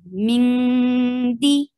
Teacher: there is ikhfa. You're hiding the sound of noon and you're going towards the towards the makhraj of dal.